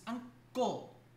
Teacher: So if you actually learn how to read the phonetic symbols, you notice here that, for example, in the word ango, you get this sound change, which is ango. And so the N becomes an ng sound.